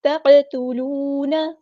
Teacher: قاف ہمارا heavy letter ہے پورا ادا کریں گے، تا ہمارا لائٹ لیٹر ہے باریک ادا کریں گے